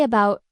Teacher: It's the schwa sound, that lazy sound that replaces vowels and unstressed syllables.